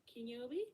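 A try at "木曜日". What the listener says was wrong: No, it's not key in this case, it's Moku.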